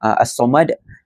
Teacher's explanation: kita perlu membaca as-samad dengan memantulkan perkataan dal itu dengan kuat dan besar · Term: qalqalah kubra